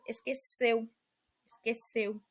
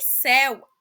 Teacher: a letra e é pronunciada com um som aberto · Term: som fechado